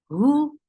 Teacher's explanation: for dhamma circular lips. The sound is very short.